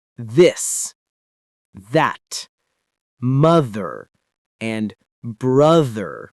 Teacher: The first th is the one you hear in words like this, that, mother, and brother. When you say these, your vocal cords vibrate.